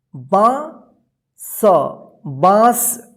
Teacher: चंद्रबिंदु जहां पे भी रहेगा, जिस अक्षर पे रहेगा उस अक्षर के साथ जो है ना नाक और मुंह की मदद से और लघुता उच्चारण होगा।